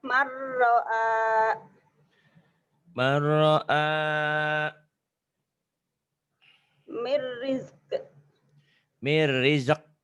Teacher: Dilebur, dimasukkan tanpa ditahan, tanpa dengung.